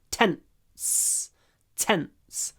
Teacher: a little pause between the clipped n and the S